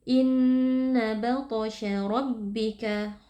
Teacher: Huruf ra di sini hukumnya adalah tafkhim atau tebal karena ra-nya berharakat fathah. Kita baca dengan mengangkat pangkal lidah.